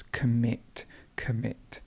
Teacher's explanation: the stress goes at the end so it's commit commit